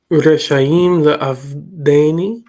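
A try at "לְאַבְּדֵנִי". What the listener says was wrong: Not le'av, because this is PL. Le'abedeni.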